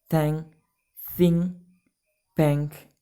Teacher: shows the change from n to ng because of the anticipatory articulation of k,